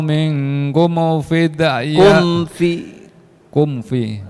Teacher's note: Fal yawma la yu'khadhu minkum Fal yawma la yu'khadhu minkum Awas, mim sukun nggak boleh dikolkolahkan